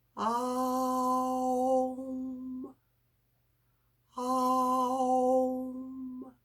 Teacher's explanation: we start with the guttural it's there the r is there we close our mouth the o comes in and we go into the ooh · instead of it coming out the lips it comes down the nostrils